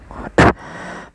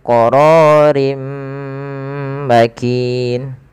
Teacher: Cara membacanya yaitu memasukkan suara tanwinnya kepada huruf setelahnya. Kalau di sini huruf setelahnya ada huruf mim, maka masukkan tanwinnya ke mim. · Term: idgham bi gunnah